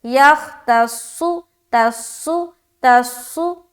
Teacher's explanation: صاد کو موٹا کر کے نکالنا ہے